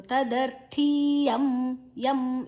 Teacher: ಯಾದ ನಂತರ ಅನುಸ್ವರದ ಉಚ್ಚಾರಣೆ ಮ